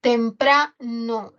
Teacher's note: La sílaba tónica es pra. Tem es átona y termina en consonante trabada. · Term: Átona trabada